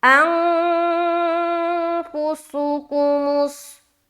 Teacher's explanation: नून की आवाज को नाक में छुपाना, ये कहलाती है इख्फा करना। तो यहाँ पर हम नाक में नून की आवाज को छुपाते हैं तो गोया यूं मालूम होगा कि हम नाक से आवाज निकाल रहे हैं, अंफुसुकुमुस, ऐसा, अंग इख्फा हो गया, फुसुकुमुस, फुसुकुमुस, यहाँ पर चारों में पेश है और चारों को जल्द अदा करना है।